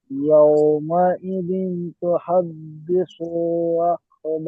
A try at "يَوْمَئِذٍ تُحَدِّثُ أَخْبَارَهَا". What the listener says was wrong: হাদিসু প্রথমে ঠিক পড়েছেন, এখন দিসু সা টান দিয়েছেন, টান হবে না। ইয়াউমাইযিন তুহাদ্দিসু আখবারাহা।